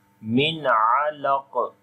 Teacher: On the qaf, you make again qalqala and heavy sound.